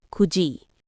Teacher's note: because that final consonant, digut, a D sound, comes before E, it shifts to jiet, a J sound.